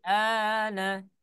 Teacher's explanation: Nah, huruf nunnya ditahan ketika kebetulan yang ditahan adalah huruf nun. Maka kalau huruf nunnya ditahan, maka muncul di sana gunnah.